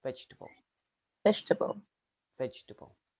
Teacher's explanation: in vegetable the second e can disappear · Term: elision